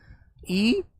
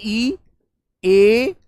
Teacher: ये होते हैं हमारे चार स्वर जीवा के अगले भाग से बोले जाते हैं। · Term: अग्र स्वर